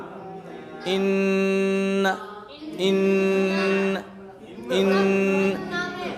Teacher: अब यहाँ नाक से आवाज़ आएगी, उसको बोलते हैं गुन्ना